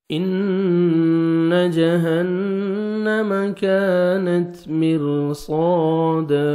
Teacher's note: ان نون مشدد غنہ کریں گے، نوز میں ساؤنڈ لے کے جائیں گے